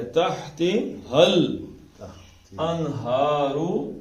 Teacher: تحتی حل انہار، تحتی حل، یہ دیکھیں، یہ ہا جو ہے یہ حلق کے اوپر کے حصے سے نکلتی ہے، تح. اور یہ جو ہا ہے یہ حلق کے نچلے حصے سے نکلتی ہے